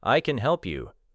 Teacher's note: The word help receives the stress. Can may sound like kun.